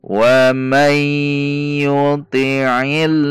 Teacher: Nun sukun bertemu ya dibaca idgham bi gunnah masuk dengan dengung.